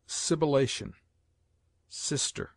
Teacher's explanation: S has a hissing sound